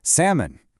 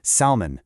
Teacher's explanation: Notice how we leave the L completely silent. You definitely want to avoid the incorrect salmon. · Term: silent L